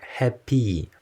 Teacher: a sound closer to the tense long e than to the short e is used especially in the final position in words like happy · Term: happy tensing